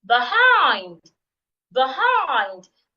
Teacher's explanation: there's a second syllable you're also saying louder longer and clearer